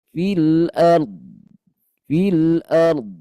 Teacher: alirkan bunyi dodnya dan panjangin sikit · hati-hati bunda dhad punya sifat istitalah ya, ketika bersukun itu bunyi makhrajnya dipanjangkan